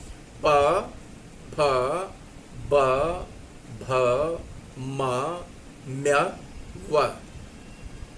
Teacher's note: प, देखिए उच्चारण स्थान में क्या होता है, दोनों ओठ एक दूसरे को स्पर्श कर रहे हैं। अंदर से आने वाली प्राणवायु जो है वो आकर के उसी के ऊपर दबाव देती है और क्या होता है, मार्ग अवरुद्ध होता है, वायु बाहर आती है, ध्वनि उच्चरित हो जाती है। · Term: प वर्ग की ध्वनियां